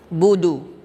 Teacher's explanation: Kemudian ba dengan dal, ya, di sini sifatnya syiddah, tertahan di bibir kita. Kemudian huruf dal ujung lidah ke pangkal gigi seri atas dan harakatnya adalah dhammah.